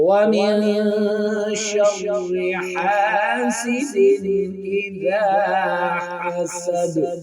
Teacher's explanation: تو وَمِن شَرِّ حَاسِدٍ إِذَا حَسَدَ، تو صورت میں ہم دال پر قلقلہ بھی کریں گے